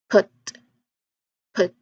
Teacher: So when we talk about voiceless again, it basically means that when you make that sound, your vocal cords aren't really vibrating